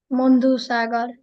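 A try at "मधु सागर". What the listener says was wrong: It's Madhu. Okay. Not Mandu. Madhu. Please say it again.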